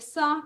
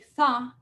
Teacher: nuestra sa es dorso alveolar, no es apico alveolar, pero sí es fricativo, no hay una constricción total, a diferencia de la za, que es interdental